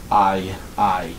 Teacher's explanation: And essentially, this is what is happening. Your jaw and your tongue start in lower central position for the alpha, ah, and it rapidly glides to or toward the high front position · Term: diphthongs